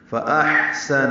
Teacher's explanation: فاحسن، حمزہ کو حا سے ملانا ہے، حمزہ اقصی حلق سے، حا وسط حلق سے ادا ہوگا. حا پہ سانس جاری رہے گی، سین نون جلدی پڑھیں گے.